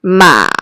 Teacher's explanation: it starts in the middle and drops down reach your lowest voice range and goes back up again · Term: the third tone